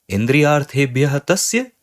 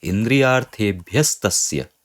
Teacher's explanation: So the visarga is clearly changing into a sakara. So this is Sattva Sandhi.